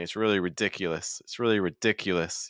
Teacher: you can hear that e sound in the middle ridiculous that's going to be our stress · you want to raise the pitch a little higher hold the sound a little bit longer and stress that adjectives